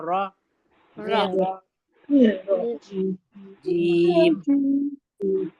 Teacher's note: तै तो नून को हमें र से मिलाना है। निर फिर र को हमें मोटा पढ़ना है